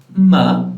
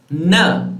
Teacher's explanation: you will have the nasal sounds basically what happens is that your velum is down your soft palate is down so air escapes through your nasal cavity